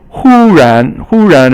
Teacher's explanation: Hu is first tone and ran is second tone.